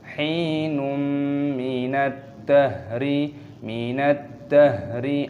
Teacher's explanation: Num adalah bagian yang dinyanyikan dengan nada mendengung. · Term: Idgham bi ghunnah